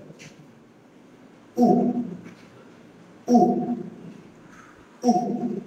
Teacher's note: আমাদের জিহ্বার পিছন থেকে উচ্চারিত হবে। আর আমাদের ঠোঁটের অবস্থা থাকবে কি রাউন্ড শেপের হবে, রাউন্ড শেপের মতো।